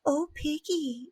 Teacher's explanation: going to kind of the Marilyn sound which is very breathy